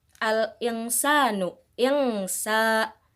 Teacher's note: Di sini ada nun sukun yang bertemu dengan huruf sa, maka cara bacanya samar-samar